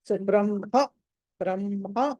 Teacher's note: ముందర మ పలకాలి తర్వాత హ